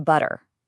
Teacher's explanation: Instead of making a sharp, hard T sound, our tongues get a little lazy. They just quickly flap against the roof of the mouth. And what you end up with is a sound that's way closer to a soft D.